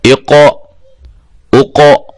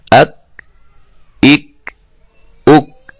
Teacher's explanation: اف اف اف. اقو، یہ ہلایا ہے قاف کو حروف قلقلہ کی وجہ سے. اقو اقو.